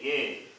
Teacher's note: only right whereas when you say yay when you say a the sound starts from the throat ends with the palate so starting place of pronunciation is different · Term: conjunct vowels